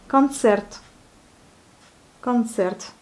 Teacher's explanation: Mais le O, on le prononce presque comme un A.